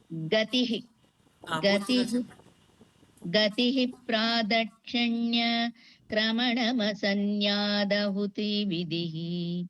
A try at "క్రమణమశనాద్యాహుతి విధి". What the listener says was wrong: మశన్యాదహుతి అంటున్నారండి, మశనాద్యాహుతి విధి. క్రమణమశనాద్యాహుతి విధి. యాహుతి దీర్ఘం అక్కర్లేదండి, స్మాల్ గానే చిన్న లెటర్ లఘువు. వ్యాహుతి విధి.